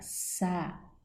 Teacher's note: Sábado, sílaba tônica, sa, proparoxítona.